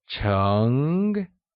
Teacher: Cheng is pronounced using a mid-rising tone, like cheng.